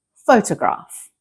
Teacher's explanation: Photograph, the stress is on the first part.